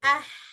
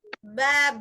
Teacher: Kemudian nggak ada getaran pada tenggorokannya. Ah, beda ketika jahar. Ba itu ada getaran di tenggorokan kita itu. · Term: hamas